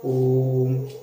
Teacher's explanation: इसमें तिगुना समय लगाकर हम ओम का उच्चारण करते हैं। आप ओम बोलेंगे तो आपको तिगुना समय लगेगा, इसलिए इसे कहते हैं त्रिमात्रिक स्वर।